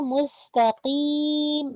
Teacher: मीम का nasal sound एंड में रखेंगे